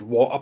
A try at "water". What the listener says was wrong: you miss the te out there on water could you say it again